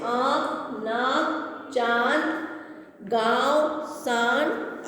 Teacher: ठीक है, ये चंद्र बिंदु है। अनुनासिक वाले वर्णों के उच्चारण में हवा नाक और मुंह दोनों से बाहर निकलती है